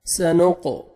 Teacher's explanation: قاف حروف قلقلہ میں سے ڈبل ساؤنڈ آئے گا